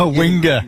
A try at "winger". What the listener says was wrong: There's no A at the end. It's ER. It's not winger. There's no A at the end, is there?